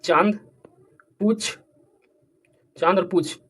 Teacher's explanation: तथा इनके उच्चारण में लघुता और कोमलता भी होता है तो अनुनासिक का उच्चारण मुख और नाक से होगा